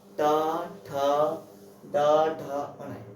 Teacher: मूर्धा को छूकर बोले जाते हैं, उन्हें हम मूर्धन्य व्यंजन कहते हैं।